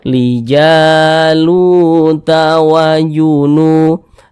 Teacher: Nah maka huruf yang memiliki tanda baca dah Ini dibaca panjang sehingganya lu dibaca panjang Mad thi'i panjangnya dua harakat